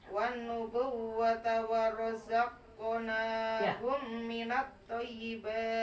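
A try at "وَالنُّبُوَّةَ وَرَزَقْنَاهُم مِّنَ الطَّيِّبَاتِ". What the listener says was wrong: Toy ditahan, toy agak lama.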